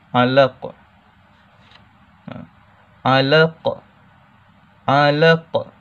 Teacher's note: Qaf tu dilantunkan bunyinya secara kuat.